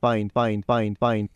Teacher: The voice stops, and then you get that, again, de-vocalizing of the D